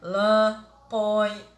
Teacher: sai pelo nariz e não pela boca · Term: vogal nasal